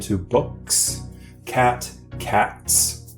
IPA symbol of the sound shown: s